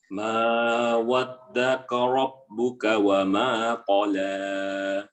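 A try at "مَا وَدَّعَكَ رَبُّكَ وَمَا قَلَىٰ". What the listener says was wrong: Jelaskan ainnya. Da'aka.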